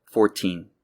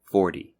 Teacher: numbers in the teens are pronounced with a t sound but multiples of 10 are pronounced with almost a D sound